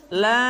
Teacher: kemudian lam dibaca panjang, la, selama 6 harokat